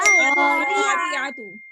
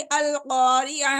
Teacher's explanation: गोलता का जो वक्फ है, जब हम इसके ऊपर वक्फ करेंगे ना तो ये ता हा में चेंज हो जाती है